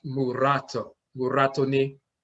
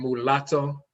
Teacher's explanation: Instead of saying mulatto, there's no letter L in Akhan, we say murato. The rolling R is used for the L.